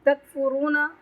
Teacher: را پر تفخیم کریں گے، واو مدہ ہے اس کو لمبا کریں گے